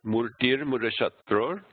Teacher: So you have long, long, short, short, long, long.